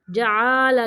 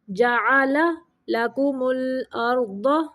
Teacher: आइन को लंबा नहीं करना।